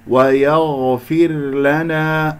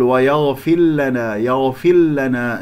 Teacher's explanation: ويغفر لنا، الغين مفخمة مرتبة رابعة لأنها ساكنة، والراء يجري فيها الصوت فترة زمنية بسيطة، وهي مكسورة قبلها مكسورة هي ساكنة تكون مرققة، ولا تدغم الراء في اللام